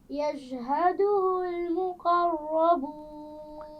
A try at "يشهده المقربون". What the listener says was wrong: شین کے مخرج کو واضح کیجیے.